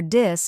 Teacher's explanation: many Learners replace it with t or d so they say Tink instead of think or dis instead of this right the trick is to put your tongue between your teeth